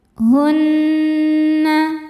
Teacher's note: nunnya gunnah musyaddadah karena nun bertasydid. Cara bacanya berdengung, tahan dengungannya kurang lebih 2 harokat.